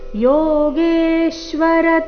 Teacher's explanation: ಯೋಗೇಶ್ವರ ಗೆ ದೀರ್ಘ ಬಂದು ಸೌಮ್ಯ ಆಘಾತ